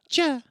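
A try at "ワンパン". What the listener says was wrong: No, they don't say the ch in it because in Japanese it's just wampa.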